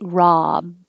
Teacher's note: you open a lot ah and keep the lips straight